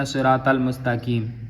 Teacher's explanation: مستقیم کاف نہیں ہے بلکہ موٹا قاف ہے